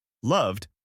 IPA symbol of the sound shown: d